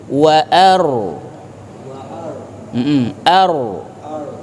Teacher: Ro-nya itu ada gaung tebal di rongga mulut.